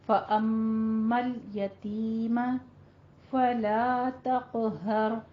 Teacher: لام کے اوپر حرکت نہیں دینی, اس کو سٹاپ کرنا ہے, ٹھیک ہے, ساکن ہے